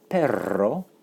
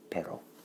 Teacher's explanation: Notice the trilled R because that's the word for dog. So this is the word for but, pero.